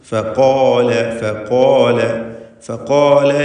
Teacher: ഫഖാല ഖാഫിനും അലിഫിനും തഫ്ഖീമാണ്.